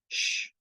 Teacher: pronounce it as the voiceless sh in English words like shoe